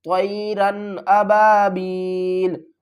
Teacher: اس کو ہم تھوڑا سا جلدی کے ساتھ غنے کے بغیر پڑھیں گے